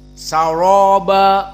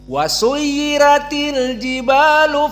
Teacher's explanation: Wars saroba ro-nya mufakhamah. Adapun suyirat ro-nya muroqqaqah. Maka semua di sini dalam keadaan muroqqaqah illa saroba.